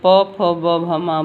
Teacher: बोलते समय हमारे मुख का जो है वो ओष्ठ का भाग स्पर्श होता है, इसलिए इन्हें ओष्ठ वर्ण कहते हैं।